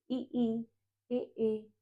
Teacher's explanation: जीभ का अगला हिस्सा ही एक्टिव हो रहा है। इ ई ए हमारी जो जीभ का अगला हिस्सा है वो हमारे दांतों को टच हो के इन स्वरों के उच्चारण में सहायता कर रहा है। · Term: अग्र स्वर